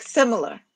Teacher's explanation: stressed with two unstressed, so it's three syllables